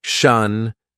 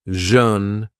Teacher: consonant sounds sh and jash they're a pair of consonants and the only difference is that one is lighter the other is heavier using more of the vocal chords